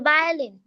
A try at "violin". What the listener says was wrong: বা বা ভায়োলিন। বা ইয়ের মতো উচ্চারণ হবে, ব আসবে না, ভ আসবে। হ্যাঁ, ভায়োলিন।